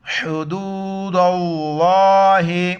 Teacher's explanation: گلے سے کریں گے، دال کو واو کے ساتھ ملائیں گے، لفظ اللہ سے پہلے دال پر زبر ہے تو لفظ اللہ کو موٹا کر کے پڑھیں گے